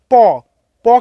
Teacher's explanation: দুটো ঠোঁট এক জায়গা থেকে তারপরে আলাদা হচ্ছে প, তাহলে আমরা প এর সাহায্যে কিন্তু অর্থাৎ ঠোঁটের সাহায্যে আমরা উচ্চারণ করছি প, তাহলে প হয়ে গেল একটি ওষ্ঠবর্ণ।